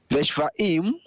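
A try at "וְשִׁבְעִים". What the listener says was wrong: That's a chirik under the shin, so we have a closed syllable in the second position. The shiv. Together all the shivim.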